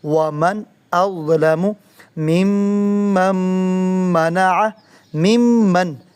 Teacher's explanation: جب نون ساکن کے بعد میم آ جائے تو نون بھی میم بن جاتا ہے۔ جیسے یہاں دو میمیں اکٹھی ہوئیں تو میم کے اوپر تشدید آ گئی۔